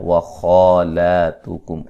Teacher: خا کو موٹا ادا کریں گے، لام کو باریک، اور دونوں پر مد اصلی یعنی کہ ایک ایک الف کی مقدار کے برابر لمبا کیا جائے گا۔ کم میم ساکن کا اظہار ہے۔